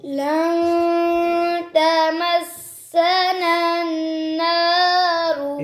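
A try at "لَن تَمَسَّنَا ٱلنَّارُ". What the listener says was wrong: ये नन दूसरा गुन्ना आपने छोड़ दिया, एक किया है, ठीक है तो दूर लन तमस्सना अन्नारु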